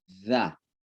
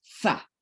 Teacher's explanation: Jadi penempatan lidah itu hampir sama, tapi kalau za dengan lembut, za. Kalau sa ya kayak digigit dan didorong pakai udara keras, sa.